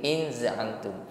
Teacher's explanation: Nun sukun bertemu zai ikhfa. Mengucapkan nun sukun kita samarkan pada huruf zai, diiringi dengan bunyi dengung yang ringan.